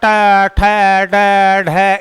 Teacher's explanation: पूरी जीभ जो है पूरे मुंह में एक लपेटा लगाएगी, मूर्धन्य में ऊपर जीभ लपेटा लगाएगी, पूरा ट, ठ, ड, ढ, इस प्रकार से इसका उच्चारण होगा।